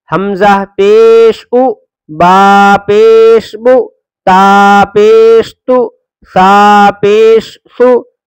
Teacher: پیش کی آواز آگے کو جاتی ہے اور ہونٹ گول ہوتے ہیں، ہونٹ گول کر کے پڑھنا۔